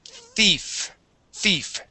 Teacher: when we pronounce the th sound like in thief, our tongue goes between our teeth